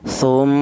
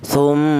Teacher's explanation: panjangnya dengung yaitu dua harakat atau dua ketukan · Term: ghunah